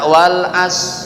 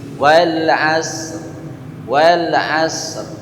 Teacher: Kalau kita baca wal as, enggak ada maknanya. Mesti ada r-nya, meskipun setengah huruf bunyinya.